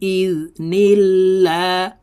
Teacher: লা আল্লাহ শব্দের আগের হরফে জের থাকার কারণে এই লামকে লা অর্থাৎ পাতলা ভাবে পড়তে হবে